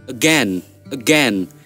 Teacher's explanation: Schwa sound. It's very short.